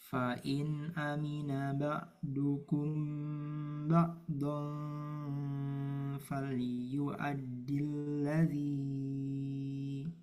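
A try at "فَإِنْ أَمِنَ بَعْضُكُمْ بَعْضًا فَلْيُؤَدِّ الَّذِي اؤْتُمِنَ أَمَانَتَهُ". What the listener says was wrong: Kepanjangan ladzi dua harokat. Fal yu'addil ladzi. Oh ya, ini mat tabi'i bertemu hamzah wasal ya. Hamzah wasalnya nggak berpengaruh. Jadi ladi jangan dipanjangin. Ladi tapi ladi langsung ke hamzah.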